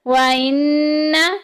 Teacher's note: نون مشدد آ گئی، غنہ کریں گے، ناک میں آواز لے کے جائیں گے